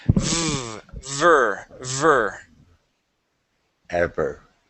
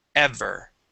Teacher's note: you don't want to say e and put your lips together you want your your teeth up on top of your bottom lip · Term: V sound